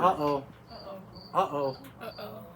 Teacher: It's like a stop. You stop your vowel. Say, uh-oh. Puts a pause in the word. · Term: glottal stop